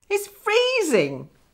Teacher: Notice the stress on freeze.